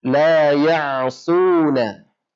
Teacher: Dia memiliki sifat safir namanya, keluar dari bagian atas gigi seri bawah bertemu dengan ujung lidah kita. Ujung lidah bertemu dengan bagian atas gigi seri bawah. Keluar huruf shad di sana dan harus ditebalkan.